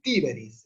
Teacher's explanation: la E es breve porque es en sílaba abierta y no tiene el macrón, o sea que no es larga. Entonces el acento va para la I.